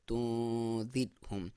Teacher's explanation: اس را سے پہلے زیر ہے تو ہم اسے باریک پڑھیں گے